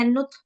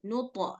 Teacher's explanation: Kalau kita bacanya nut, itu berarti hams. Ini qalqalah, memang huruf to-nya yang mantul, yang kembali.